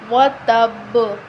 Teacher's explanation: کیونکہ با پر جب ہم وقف کریں گے تو با ساکن ہو جائے گی، تو ہم با حروف قلقلہ میں سے بن جائے گی تو ہم با پہ قلقلہ کریں گے، ٹھیک ہے؟ با حروف قلقلہ ہو جائے گی تو ہم با پہ قلقلہ کریں گے